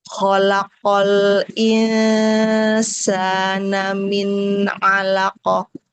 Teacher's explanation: Setelah nun di alisan lalu pindah ke makhraj ain di tenggorokan tengah ya.